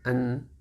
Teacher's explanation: Maka ketika dia sukun an, ini sama dengan bacaan tanwin. An jadi masuk ke hidung. Cuman tidak ditahan, hanya masuk ke hidung saja. Itu karena naqisul gunnah.